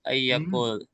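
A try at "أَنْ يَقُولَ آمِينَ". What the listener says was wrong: Ayyakula an. Ingat an tuh.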